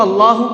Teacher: اللہ کے لام کو پر کر کے پڑھیں گے، یعنی کہ منہ بھر کے پڑھیں گے، تو اس کو اللہ پڑھیں گے، اللہ نہیں پڑھیں گے، ٹھیک ہے۔